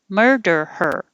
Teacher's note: der hold it in the r position to say her so your tongue should be pulled back in the r position almost the whole time only going up the touch for the d